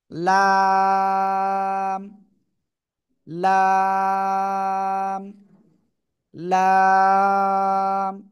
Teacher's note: জিহ্বার আগার কিনারা উপরে মাড়ির দাঁতের গোড়ার সাথে লাগাবো, লাগিয়ে চার এলিফ টানে উচ্চারণ করব।